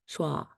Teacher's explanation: it's made right in the middle of your mouth with no stretching or tightening of your lips or tongue